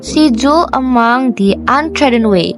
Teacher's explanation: She is unstressed, dwell is stressed, is unstressed, and mong is stressed. So the pattern will be da-dum, da-dum, da-dum, da-dum. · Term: iambic tetrameter